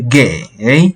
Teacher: 给 is the falling and rising tone.